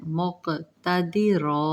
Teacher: अला कुल्ली शैइन मुक़तदिरा, अला कुल्ली, कुल्ली शैइन, یہاں پہ میم مشدد ادغام ہو رہا ہے، یرملون کا قاعدہ، شیء مق، قاف پر جزم قلقلہ کیا جائے